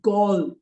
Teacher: is open the oh there is not gold but gold and because the d is not followed by a vowel it becomes a sort of a dt more of a t than a d